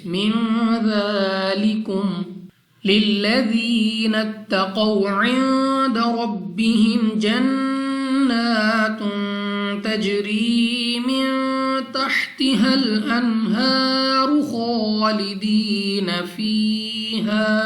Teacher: نون مشدد ناک میں لے جا کر پڑھنا ہے یعنی غنہ کریں گے